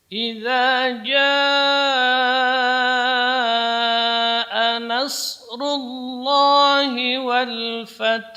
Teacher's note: Ja kalimat wajib muttasil, tidak boleh kurang dari 4 harokat